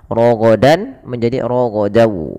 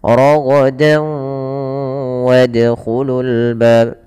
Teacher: masukkan tanwinnya ke waw dan ditahan dan dibunyikan dengan huruf waw. Suara nunnya hilang. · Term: idgham bi gunnah